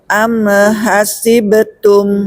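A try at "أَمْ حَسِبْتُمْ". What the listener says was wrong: Lagi mantul si mim. Am hasibatum.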